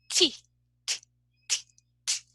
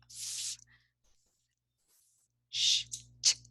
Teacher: there is no vibration they sounds are called voiceless okay because there is no vibration our vocal cords are apart